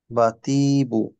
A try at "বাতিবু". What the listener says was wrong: না, তিতে টান হয়ে গেছে বেশি। বা তি বু।